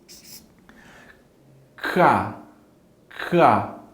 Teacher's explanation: som que a gente faz na garganta, ele é o primeiro som, ele é o som do C, que é como se fosse um som de K